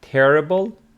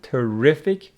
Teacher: terrible with the stress on the first syllable terrific on the second